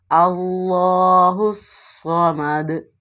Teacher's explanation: اندرونی حصے سے لگے تو صاد کی ادائیگی ہوتی ہے، اور مستعلیہ میں سے ہونے کی وجہ سے موٹا پڑا جائے گا اور صفیریہ میں سے ہونے کی وجہ سے سٹی کی آواز آئے گی · ہا جو ہے یہ والا ہا حلق کے آخری حصے سے ادا ہوتا ہے